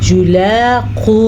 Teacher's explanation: आगे वाव मदा है तो इसलिए हमने वाव को खींच के पढ़ा है।